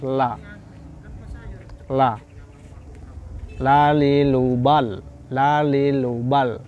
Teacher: Yakni ma baina hafatil lisani wa ma yahadhihima minal lisatil uliya. Ya, pinggir ujung lidah bertemu gigi, punggung ujung lidah bertemu gusi muka yang atas. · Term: huruf lam